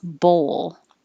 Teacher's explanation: It's almost two syllables if you say bowl. So make sure you round your lips and then unround your lips for the L.